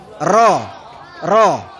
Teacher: lidah bagian depan dengan gusi yang di atas, yaitu untuk huruf ro